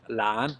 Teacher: we have again the word lan, second tone rising